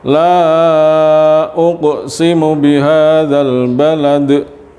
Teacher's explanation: ada huruf mad bertemu hamzah tidak dalam satu kalimat hemat jaiz munfasil di sini panjangnya dua setengah alif atau lima harokat lima ketukan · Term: mad jaiz munfasil